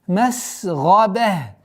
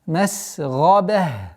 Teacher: После ба марбута танвин аннулируется. Сама та марбута переходит в звук ха.